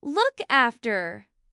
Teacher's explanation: the stress is usually on the particle after